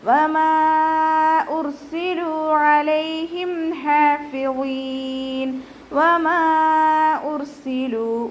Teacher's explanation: വാവ് ഉച്ചരിക്കുമ്പോൾ ചുണ്ടുകളൊന്ന് സർക്കിൾ ചെയ്ത് കൊടുക്കുക